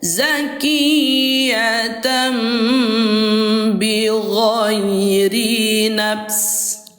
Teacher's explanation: Pengucapan nun sukun atau tanwin menjadi mim ketika bertemu dengan huruf ba disertai dengan gunah. Tuh, disertai dengan gunah ya. · Ini tuh bacaannya kan awalnya zakiyatan ujungnya an an gitu ya. Namun setelah berjumpa dengan huruf ba diganti menjadi mim menjadi am. Jadi bacanya zakiyat bukan lagi tan tapi tam gitu ya. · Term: iqlab